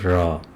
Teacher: जब जीभ मुंह के मध्य में आ जाती हैं और बार बार झटके से आगे पीछे गिरती हैं तो उसको लुंठित स्वर कहते हैं, जैसे र।